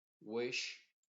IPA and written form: wɪʃ (Wish)